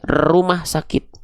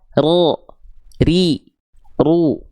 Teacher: Huruf ro itu justru nggak boleh getarannya kayak huruf R. Getarannya banyak gitu ya. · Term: takrir